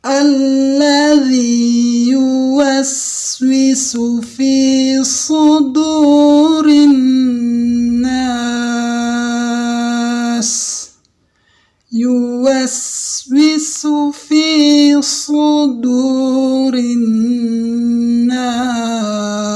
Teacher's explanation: Ini huruf sod ya, jadi diangkat, lidahnya itu diangkat, ditebalkan. Dia punya 2 sifat, itbaq dan isti'la, huruf sod ini.